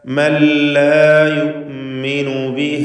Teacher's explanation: ഇദ്ഗാം ബിഗൈരി ഗുന്ന നൽകി മണിക്കാതെ പൂർണ്ണമായും ലാമിലേക്ക് ലയിപ്പിച്ച് ഉച്ചരിക്കണം